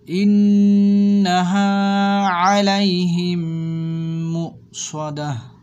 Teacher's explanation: এই যে মু এখানে হামজা আছে, একটু ধাক্কার মতন দিয়ে পড়তে হবে